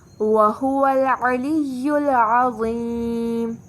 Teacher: دونوں عین حلق سے وسط حلق سے ادا ہوں گے، وا موٹا پڑھا جائے گا اور یا کی آواز لمبی ہوگی، آواز لمبی کر کے پڑھیں گے